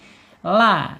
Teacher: Tapi dari sini dulu la ya, lam makhrajnya ada di alisan ya, ujung tepi lidahnya menyentuh langit-langit yang depan sejajar dengan gigi seri